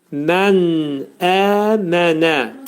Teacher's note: Burada nun hərfi burunda izhar olacaq. Əmənə. Əki səs qədər qaldırılacaq.